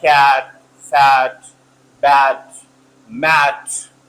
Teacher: they are produce with low tongue and mouth when you pronounce them your mouth is in lower position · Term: open vowels